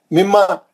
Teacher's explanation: तजदीद है तो आप ठहर जाना, दो हरकत करना, नाक में आवाज लाके गुन्ना अच्छा करना